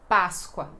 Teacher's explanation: Mesmo que você é falante de espanhol e tem a palavra tão similar ao português, é diferente a pronúncia, na verdade bem diferente porque esse P é bem enfático porque é a sílaba mais forte e então "pa", bem então é esta pronúncia: Páscoa!